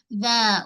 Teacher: hujung lidah keluar sedikit daripada sempadan gigi. Hujung lidah kita ni dia mesti keluar sedikit daripada sempadan gigi ni. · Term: zal